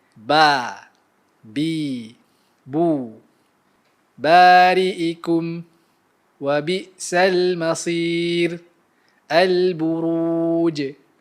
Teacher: huruf yang makhrajnya di 2 bibir. Huruf ini disebut secara jelas dan ia merupakan huruf yang nipis. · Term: Huruf ba